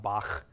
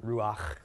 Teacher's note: makes a huh which is depicted as a CH but is pronounced kind of a spinning sound in the back of your throat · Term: hate sound